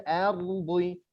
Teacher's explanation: Wa idza qila lahum la tufsidu fil ardi bukan ardi, tapi roknya itu samar. Roknya itu dia lembut, tidak seperti r. Ardi, itu salah, kasar.